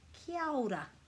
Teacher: with a little bit of a roll on the R